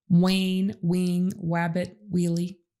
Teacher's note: Most kids who are mispronouncing initial R are saying a W sound instead, like wane, wing, wabbit, wheelie.